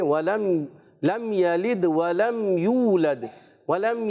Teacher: ولم یہاں اظہار شفیع کا قاعدہ، غنہ نہیں کریں گے